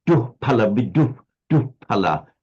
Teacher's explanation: a slight f to it, not a full f, but a h, but slightly veering towards the f